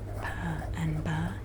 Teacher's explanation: you are putting both of your lips together to make the sound pa and ba